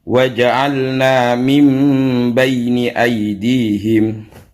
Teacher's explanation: Jadi nun matinya berubah menjadi mim. Itu yang dimaksud dengan iqlab.